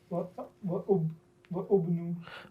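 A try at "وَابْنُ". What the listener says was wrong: With that alif, go ahead and we're going to skip that alif and I'm going to explain the reason right now. Wabnu.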